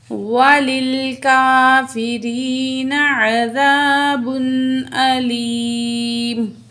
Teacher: آیت مکمل ہو گئی تو دونوں پیش ڈراپ ہو جائیں گی، میم ساکن پڑھا جائے گا